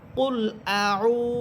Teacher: আ হরফে কিন্তু কোনো টান হবে না, আইন হরফে টেনে পড়তে হবে।